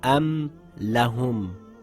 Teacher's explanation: My lips came together as should when saying the Meem clearly. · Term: Meem must be pronounced clearly